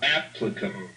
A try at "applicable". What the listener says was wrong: applicable. But applicable, you need to give even a little more emphasis to that L. Be sure that you're really feeling it, right? You feel that little end of your tongue there against the gum ridge.